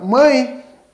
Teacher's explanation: quando nós pronunciamos o E com o som de I, no caso aí, como exemplo, a palavra mãe, nós temos aí então também uma semivogal